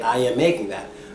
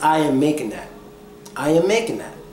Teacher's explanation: when a word ends in ing and is followed with the word that begins with th the G the T and the H disappear all three of those letters disappear they're not there so instead